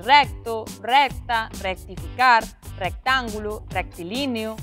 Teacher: nos cultismos con CT, a pronuncia do son K pode ser casi imperceptible, pero o vogal que o precede é sempre aberta